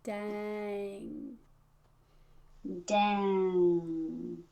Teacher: Let the vowel be more important than the NG. Let the NG just be soft.